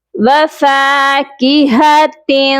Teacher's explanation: وفاکہۃ کثیرہ، واو زبر و، فا الف زبر فا، فا کو ایک الف کے برابر لمبا کر کے پڑھیں گے کیونکہ فا کے ساتھ ایک الف ہے۔ وفاکہۃ، ہا کی آواز سینے والے حلق سے آئے گی اور تا کے نیچے دو زیر ہیں، اس تنوین پر ہم اپنی آواز کو ناک میں چھپائیں گے۔